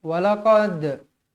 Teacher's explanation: Walaqad, qad, huruf dal, huruf qalqalah sughra. Qalqalah berada di tengah-tengah, dibaca melantun.